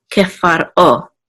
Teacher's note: We want to say kefar, and then we want to make sure there's a distinct separation between far and o